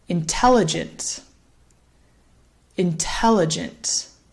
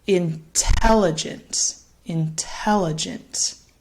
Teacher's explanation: so the stress here falls again on that second syllable